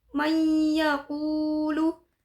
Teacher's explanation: terdapat hukum bacaan idgham bi gunnah yaitu nun sukun bertemu dengan ya. Cara membacanya adalah memasukkan dengan mendengung.